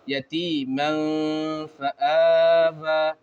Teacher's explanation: تو یہاں پر اخفا کا قاعدہ ہوگا، نون کی آواز کو ناک میں چھپا کر پڑھا جائیں گے